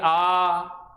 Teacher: पीछे कंठ की ध्वनि, जोर कहाँ पड़ेगा, जीभ के पीछे वाले भाग पे। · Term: पश्च स्वर